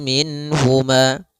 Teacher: mengeluarkan setiap huruf daripada makhrajnya tanpa disertai dengan gunah pada huruf-huruf yang dia dijelaskan yaitu huruf nun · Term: izhar halqi